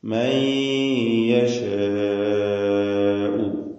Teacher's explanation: മൻ എന്നതിലെ സാക്കിനത്തായ നൂനിനെ ഇദ്ഗാം ബിഗുന്ന ചെയ്ത് യായിലേക്ക് ഭാഗികമായി ലയിപ്പിച്ച് മണിക്കണം. ഇദ്ഗാം ബിഗുന്ന പൂർണ്ണമായ ഇദ്ഗാമല്ല, നാഖിസാണ്.